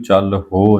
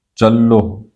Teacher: ਹਰ ਜਸ ਵਖਰ ਲੈ ਚੱਲੋ, ਚੱਲੋ ਚੱਚਾ ਲੱਲਾ ਹਾਹੇ ਨੂੰ ਔਂਕੜ, ਇਹਨੂੰ ਚੱਲ ਹੋ ਨਹੀਂ ਪੜਨਾ, ਚੱਲੋ ਇਹਦਾ ਪਾਠ ਕਰਨਾ। ਹਾਹੇ ਦੀ ਜੋ ਧੁਨੀ ਹੈ ਉਹ ਮੁਕਤਾ ਰੂਪ ਦੇ ਵਿੱਚ ਅੱਧੀ ਆਏਗੀ ਤੇ ਲੱਲੇ ਨੂੰ ਹੋੜਾ ਰੂਪ ਦੇ ਵਿੱਚ ਉਹ ਕਨਵਰਟ ਹੋ ਜਾਏਗੀ ਹਾਹੇ ਨੂੰ ਜੋ ਔਂਕੜ ਹੈ।